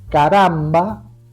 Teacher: caramba tiene acento en la penúltima A, es grave, pero no lleva tilde porque termina en una vocal.